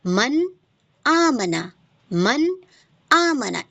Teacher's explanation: तो हमने यहाँ पे क्या जाना कि यहाँ पे नून साकिन तनवीन का कायदा हो रहा है, जो कि इज़हार है। तो इज़हार यानी कि मैंने अब नून की आवाज़ को ज़ाहिर करके पढ़ना है। मन आमना, मन आमना, एज़ इट इज़ आपको पढ़ना है।